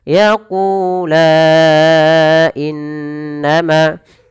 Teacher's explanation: kita hukumi dengan mad jaiz munfasil, maka la-nya dipanjangkan 4 harakat